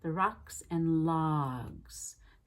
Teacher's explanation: when she said logs, it sounded more like locks because she did it so quickly and kept it so forward